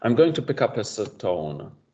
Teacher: a mini vowel like a schwa in between the consonants to break the cluster up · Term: apenthesis